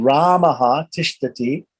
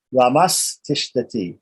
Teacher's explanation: The Visarga, short A Visarga here, right, is followed by a T, which is a dental T, right? So the dental T is going to result in making the Visarga into a dental S.